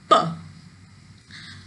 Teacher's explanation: both lips, upper lip and lower lip, they come together and then they make a complete closure, and then air is released suddenly with a puff